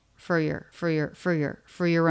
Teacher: for your both reduce they both have the schwa